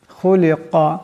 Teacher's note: এখানে খা এবং কাফ দুইটাকে মোটা আওয়াজে পড়তে হবে।